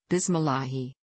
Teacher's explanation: he should not pronounce the lam with a heavy emphasis, instead, just with the tip of the tongue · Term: light